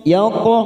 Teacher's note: Lam yaqamith, yaqo qalqala ko, ada qalqala ko kita pantulkan, namanya qalqala sugro karena mati di tengah kalimat. Kita pantulkan dengan posisi bibir kita seperti cemberut.